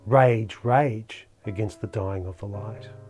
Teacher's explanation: line three opens with a spondee two stressed syllables that appear side by side rage rage against the dying of the light the extra stress